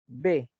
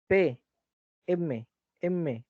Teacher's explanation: Estás pegando los labios para la B, para la P y para la M. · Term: bilabiales